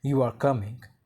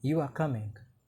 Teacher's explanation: in English, rising intonation at the end of a statement can turn into a question